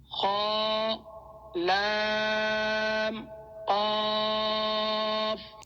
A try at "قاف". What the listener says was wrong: یہ والا قاف بھی موٹے والا ہے، اس کو باریک کاف جو ہے اس میں نہیں پڑھنا، قاف موٹا والا پڑھنا ہے۔ آگے چلیں۔